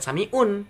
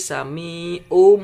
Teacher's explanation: Bukan sami'un, tapi sami'um, mulutnya mingkem. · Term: membalik